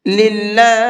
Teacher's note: اس اللہ کے لام کو باریک کر کے پڑھیں گے